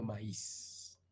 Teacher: la mayoría de nosotros produce esto como un fono también fricativo, pero no interdental, sino más bien alveolar, y mantenemos el hecho de que es sordo